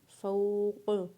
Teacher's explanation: فا کو واولین کے ساتھ پڑھنا ہے اور قاف کے اوپر زبر کو پڑھنا ہے، اور وقف کرنے کے بعد قاف کو ساکن پڑھنا ہے۔